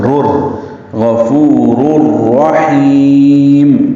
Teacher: مدہ ہے، را کو پر پڑھنا ہے کیونکہ 2 پیشے ہیں، تنوین کے بعد پھر را ہے، دونوں راؤں کا ادغام کر دیں گے، یہ ادغام کامل ہوگا ، رور غفور الرحیم، را پر پڑھیں گے، ہا وسط حلق